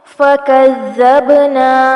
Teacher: زال کو نرمی سے پڑھیں گے، با کو ہلائیں گے، کلکلا ہوگا